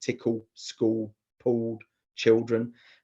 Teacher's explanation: on all the occasions where there was a syllable final L, they vocalized the L. In other words, they used a vowel.